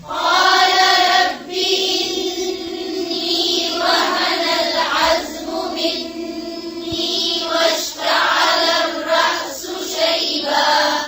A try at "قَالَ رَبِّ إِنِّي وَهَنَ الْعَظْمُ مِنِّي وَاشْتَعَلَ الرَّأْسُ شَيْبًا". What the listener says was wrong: फिर से पढ़ें قال ربي रब्बी नहीं पढ़ेंगे रब्बी इन्नी.